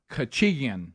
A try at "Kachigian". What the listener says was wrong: You say it really fast. And I've even heard some people say instead of Ian, it's in. Kachigian. It's how it's written there.